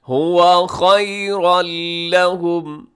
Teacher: خیرن لہم نہیں پڑھنا آپ نے، بلکہ یہاں نون کی آواز کو بالکل ختم کر دینا ہے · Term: ادغام بغیر غنّے کے